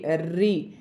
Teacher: जीभ जो है जो हमारे मसूड़े होते हैं ना अंदर वाले दांत के पीछे तो इस भाग को स्पर्श करती है इसलिए इसे मूर्धन्य कहते हैं।